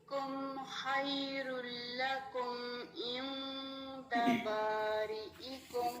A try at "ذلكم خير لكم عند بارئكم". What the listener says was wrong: ذالکم خیر لکم، خواہ کو انڈرلائن کریں، یہ بھی ہیوی لیٹر ہے. خی نہیں پڑھیں گے، خی نہیں، زبان کی جو روٹ ہے اس کو اٹھا کے پڑھیں گے. خیر لکم عین زرعی عند بارئکم، اس کو پڑھیں.